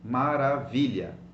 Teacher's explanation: but you will stress the second last syllable